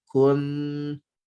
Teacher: tetapi sebenarnya ikhfa ni dia bukan NG, dia antara N dengan T